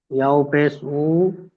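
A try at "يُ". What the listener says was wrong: ইয়া ওয়াও পেশ উ না, ইয়া ওয়াও পেশ ইউ।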